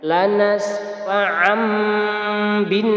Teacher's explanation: Iqlab hurufnya hanya ada 1, yakni ba. Bacanya mengganti bunyi nun sukun atau bunyi tanwin menjadi bunyi mim sukun.